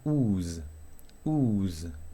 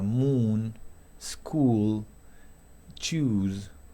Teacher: Se redondean bien los labios, la lengua se desciende un poco, es una U larga